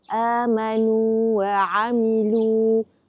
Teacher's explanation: Wau mad bertemu dengan wau berbaris. Namun kita tak baca dengan idgham. Kita baca dengan izhar. · Ya mad dan waw mad makhrajnya adalah rongga mulut.